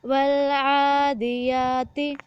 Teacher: آئین کو موٹا پڑھنا ہے اور آئین کے اوپر کھڑی ہے، اس کو 1 سے 2 الف کے برابر لمبا کرنا ہے